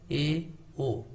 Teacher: अर्ध समृद्ध का मतलब कि जिनमें मुंह थोड़ा सा कम खुलता है